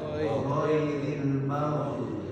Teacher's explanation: Kurang bergetar. Jadi G-nya agak dilunturkan, ditambah getarannya.